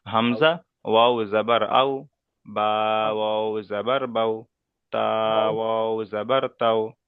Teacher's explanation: হামজা ওয়াউ জাবার আউ বলে টান দেবো না, এখানে ওয়াউলিন।